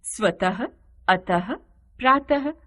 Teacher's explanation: जिन शब्दों में दो भिन्न नासिक्य व्यंजनों का एक साथ प्रयोग होता है तो स्वर रहित पंचमाक्षर के स्थान पर अनुस्वार का प्रयोग नहीं होता है, जैसे जन्म, वांग्मय, निम्न आदि। विसर्ग, विसर्ग का उच्चारण अघोष ह व्यंजन के समान होता है